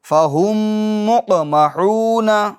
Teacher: تو میم ساکن ہے، دیکھیں میم کے اوپر آپ سکون نظر آ رہا ہوگا آپ کو۔ میم ساکن کے بعد دوسری میم آ رہی ہے، تو اس کے اندر بھی کیا ہوگا؟ ادغام شفوی ہوگا